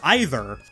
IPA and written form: ˈaɪðər (EYE-ther)